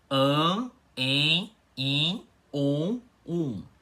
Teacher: elas só ficam pronunciadas com o ar saindo pela boca e pelo nariz. E é por isso que elas são chamadas assim, vogais nasais.